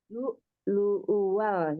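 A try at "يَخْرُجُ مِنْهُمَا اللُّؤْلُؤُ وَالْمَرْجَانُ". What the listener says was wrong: Lu, lu-nya itu kan dihentak karena ada hamzah sukun. Terus lu wal. Yang lu keduanya, lu wal marjan. Nah, itu hati-hati yang pas lu wal.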